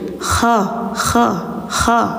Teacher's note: Kha kayak ada suara dengkur, kayak suara ngorok dikit.